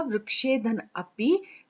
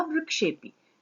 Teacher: पदांत ए और ओ के बाद अगर अ आता है तो ये वाला जो अ है वो ओ जैसा हो जाता है, पूर्व रूप हो जाता है। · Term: पूर्व रूप संधि